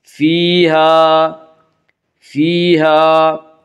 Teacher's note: فیہا فیہا الف مدہ، الف ہمیشہ مدہ ہوتا ہے، الف سے پہلے ہمیشہ زبر ہوتا ہے، الف مدہ کو ایک الف کے برابر کھینچ کر پڑھیں گے